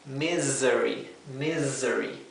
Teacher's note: un estado de de desgracia sí fíjense que la palabra misery la s no se pronuncia S como la s suave del español se pronuncia como la s zumbada Z esto es misery misery no es misery es misery así que